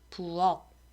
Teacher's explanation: 하지만 부엌이라고 하면 부엌, 음절 끝에 있었던 키읔이 기역으로 소리가 난단 말이에요. 왜냐하면 키읔은 한국어의 음절 종성에 올 수 있는 자음 7개에 포함되지 않으니까.